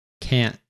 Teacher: like a glottal T, actually, that's in the back of the throat